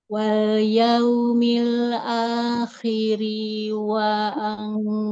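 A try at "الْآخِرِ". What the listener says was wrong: Rohnya, rohnya nggak panjang. rohnya jangan dipanjangkan. Wal yaumil akhiri wa anfaqu.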